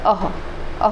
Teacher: अह विसर्ग होता है। इसका मुख के किस भाग से हम प्रयोग करते हैं, तो कंठ से निकलता है। अह कहाँ से निकलेगा, कंठ से निकलेगा। · अह कहाँ से निकलेगा, कंठ से निकलेगा। घोषत्व तो ये सघोष है, ये महाप्राण है, अल्प प्राण नहीं है बल्कि महाप्राण है।